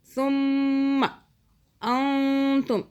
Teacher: یہاں پہ ثم میم جو ہے یہ مشدد ہے، یہاں پہ 2 سیکنڈ کا گنہ کریں گے